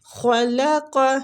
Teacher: هو الذی خلق لکم ما فی الارض جمیعا، هو الذی، زی کو نرمی کے ساتھ کھینچیں گے، یا مد ہو رہی ہے، خلق، خا پر حروف ہے، قاف بھی مستعلیہ حروف ہے، لام باریک پڑھیں گے۔ ٹھیک، خلق، خلوق کر کے لام کو پر نہیں کرنا